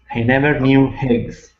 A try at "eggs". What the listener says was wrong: so remove the h you're saying an h you're saying hey eggs